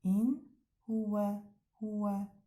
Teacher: Göründüyü kimi hə hərfinə də çatmış nun. Sükunlu nun, sakin nun aydın oxunur. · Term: izhar